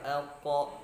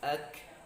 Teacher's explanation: Kalau qaf paling belakang, jadi pangkal lidah bertemu dengan langit-langit yang berdaging, itu huruf qaf, sehingga lebih dalam